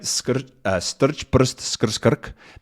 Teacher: syllabic consonants where an R takes up a vowel sound, basically.